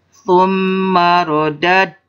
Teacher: Ini disebutnya qalqalah. Da berharkat sukun, maka dipantulkan ya.